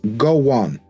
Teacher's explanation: the dip thong O ends in a nice round O